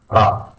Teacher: a rolled R, reminiscent of the Spanish or Italian R